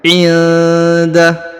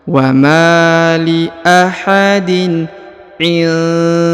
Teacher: Huruf nun sukun bertemu da, maka didengungkan dan disamarkan ya.